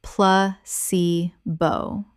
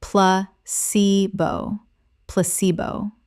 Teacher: The stress is on the second syllable, ce.